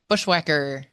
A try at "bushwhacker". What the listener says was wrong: You really need to pronounce the H on that. Whacker. Bushwhacker. It's got to be a bushwhacker.